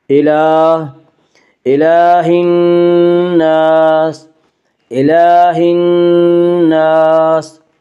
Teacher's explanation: کھڑا زبر کو 1 الف کے برابر کھینچ کر پڑھیں گے۔ الہ، الہ الناس، الہ الناس، نون مشدد غنہ ہوگا، غنہ کی مقدار 1 الف ہے۔